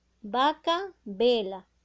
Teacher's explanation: pronuncie una palabra con V y pronuncie una palabra con B, suena igual